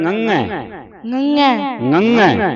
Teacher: ਦੂਜੀ ਹੁੰਦੀ ਤੇ ਟਿੱਪੀ ਲੱਗੀ ਹੈ। ਜਦੋਂ ਟਿੱਪੀ ਲੱਗ ਜੇ ਉਹ ਵੀ ਨੱਕ ਵਿੱਚ ਬੋਲੀ ਜਾਂਦੀ ਹੈ।